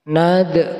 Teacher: Kemudian ada bacaan qalqalah sughra, yaitu dal yang mati asli di tengah kata, harus dipantulkan bacanya.